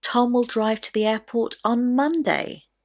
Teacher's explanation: the stress will naturally go on the word Monday